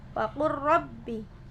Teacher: jadi nggak perlu dinampakkan lamnya, langsung masuk ke ra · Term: idgham mutaqariban